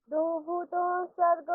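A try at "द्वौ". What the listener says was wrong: দ্বৌ নয়, দ্বৌ। দ্বৌ, দয় বয় আছে তো, দ্বৌ।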